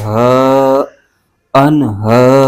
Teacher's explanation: ہا پر کھڑا زبر ہے، اس کو ایک الف کھینچ کے پڑھیں گے